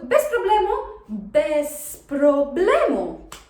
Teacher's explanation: Just note that even though we have the letter Z there, it doesn't really sound like Z. It's not that strong. We pronounce it more like an S. So bez problemu, because we make a phonetic liaison between the two words.